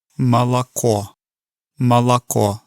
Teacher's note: then the third syllable, which has the stress, is the pure sound of the o. So it's ma, la, ko. · So the first syllable is more like a ma. The second syllable sounds like a la, so it almost sounds like an ah sound. And then the third syllable, which has the stress, is the pure sound of the o.